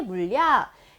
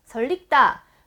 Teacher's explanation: 리을 받침 뒤에는 당연히 유음화가 진행이 되기 때문에 리을로 발음합니다